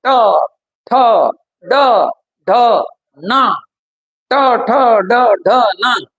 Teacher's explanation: आपली जीभ जी आहे ना ही जीभ अशी आतमध्ये वळण घेते, आतमध्ये ती वळण घेते आणि वळण घेत असताना वरचा जो खोल भाग जो आहे मुद्दा क्रमांक 3, मुद्दा क्रमांक 3 मूर्धा जी आहे त्या ठिकाणी आपली जीभ जी आहे ट ट जीभ अशी वर चालली ट ठ ड ढ न ट ठ ड ढ न. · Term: मूर्धन्य